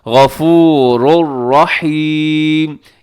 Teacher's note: غفور الرحیم میں ادغام ہو رہا ہے، اور یہ ادغام جو ہے یہ بلا غنہ ہے. غفورن کے آخر میں تنوین ہے، دو جو پیش کی تنوین ہے، اور اس کے بعد رحیمن کے شروع میں را ہے، یعنی تنوین کے بعد را ہے، اور را حروف یرملون کے اندر شامل ہے، آپ جانتے ہیں، تو اس لیے یہاں پر ہم ادغام کرتے ہیں غفور الرحیم.